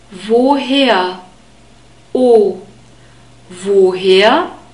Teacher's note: The German W is always pronounced like the English V sound. We have a long O sound.